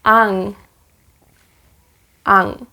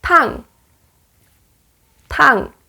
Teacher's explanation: back of the tongue touches the soft palate.